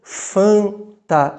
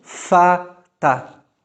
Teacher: Eu não vou ler esse A com som aberto de A, mas com som nasal de AN. Então, o N nasalizou o A.